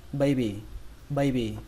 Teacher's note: trọng âm của nó rơi vào âm đầu tiên, âm bay